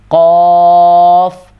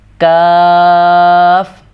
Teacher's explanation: یہ اس کو موٹا کرنا ہے قاف اور اس کو باریک کر کے پڑھنا ہے کاف